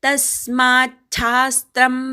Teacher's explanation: तस्मात शास्त्रम असे शब्द आहेत, पण त्याचा संधी होऊन तचा च झालाय, शाचा छा झाला आहे. आपण जोडून म्हटलं की आपोआप हेच उच्चार ऐकू येईल.